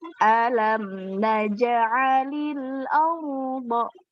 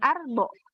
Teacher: ro sukun sebelumnya huruf yang berharokat fathah. Ingat dia dibulatkan. Bibirnya juga ikut dibulatkan. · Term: Tafhim